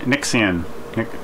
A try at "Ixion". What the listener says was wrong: Ixion. There's no N.